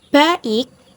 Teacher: Contohnya pada kata baik yang dibagi menjadi ba dan ik. Huruf A dan huruf I tidak menyatu menjadi satu bunyi. · Vokal rangkap adalah 2 huruf vokal yang ditulis secara berdampingan, tetapi masing-masing tetap diucapkan secara terpisah karena berada pada suku kata yang berbeda. Dengan kata lain, vokal rangkap tidak menghasilkan satu bunyi seperti pada diftong.